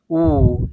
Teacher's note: is rounded high back vowel